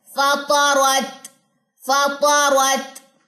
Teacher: فا باریک، طا موٹا، را بھی موٹا، اور تا کے ساتھ جا کے اس کی جوائننگ کرے اور اس میں ہمس ہے